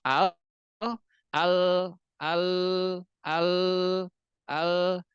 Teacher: rasakan pasti suaranya itu menyebar ke pinggir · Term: lam